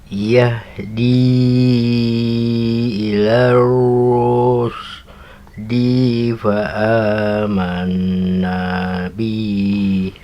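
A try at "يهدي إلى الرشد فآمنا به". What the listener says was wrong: Bihnya apa? Fa amanna bih.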